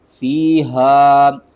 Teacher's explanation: ہا کو آپ نے حلق کے سب سے نیچے والے حصے سے ادا کرنا ہے، آواز جو ہے نا وہ بھاری آنی چاہیے.